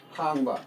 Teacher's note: This is rising tone word hangba.